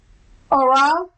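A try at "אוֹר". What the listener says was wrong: There's no vowel associated with the R sound. Yes, or.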